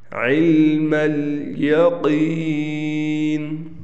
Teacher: قاف کو واضح طور پر موٹا پڑھنا ہے